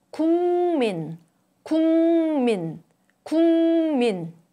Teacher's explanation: The plosive sound 그 changes to 응, the nasal sound when it is followed by 무, which is also a nasal sound. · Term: Nasalization